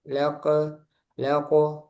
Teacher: Kalau dal kan tipis, qof tebal sehingga tebal ee mantulnya juga tebal.